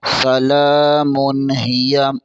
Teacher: میم کے اوپر 2 پیش تنوین ہے، اس کے آگے ہا حروف حلق میں سے ہے، یہاں پر غنہ نہیں اظہار ہوگا۔